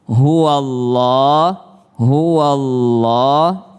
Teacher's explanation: Ini huwa huruf fathah bertemu dengan Allah, maka dia tafkhim, maka dia tebal